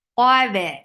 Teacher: And ba is light. Qaf is heavy, but ba is light.